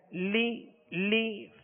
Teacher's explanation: دونوں لام کو، ان کی جو حرکت ہے زیر ہے، اس کو بغیر کھینچے ادا کریں گے اور آواز کو گرائیں گے